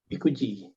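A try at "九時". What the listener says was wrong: 9 kuji. Kuji, bukan panjang, sorry. Kuji. Kuji. Dia tidak Q panjang, tapi dia ku pendek. Ku, gitu aja. Kuji.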